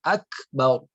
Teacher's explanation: Kaf apabila dia sukun, ya, ta juga apabila dia sukun, maka dia ada sifat hamas yang harus dikeluarkan menjadi akbar.